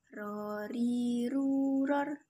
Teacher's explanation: dikeluarkan dengan cara menyentuhkan lidah terdepan atau adnal lisan dengan langit-langit bagian depan